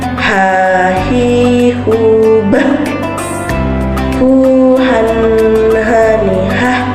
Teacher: Cara melafalkannya dikeluarkan dari tengah tenggorokan. Jika dilafalkan persis seperti kita melafalkan kata ayah. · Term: huruf H